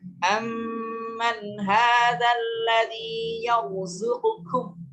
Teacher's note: bedakan pelafalan qaf dengan kaf, ya, karena makhrajnya berbeda, ya. Makhraj kaf ini sedikit di atas dari makhraj qaf